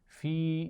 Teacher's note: فی یہاں پر چھوٹی مد آپ دیکھ رہے ہیں تو حروف مدہ سے تھوڑا سا زیادہ کھینچ کر پڑھیں گے